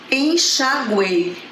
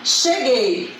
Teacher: Eu tenho o U, que é uma semivogal, o E, que é uma vogal, e o I, uma semivogal. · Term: tritongo